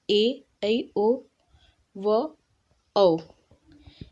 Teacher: इसको बोलने में ह्रस्व स्वर से 2 गुना समय लगता है उन्हें दीर्घ स्वर कहते हैं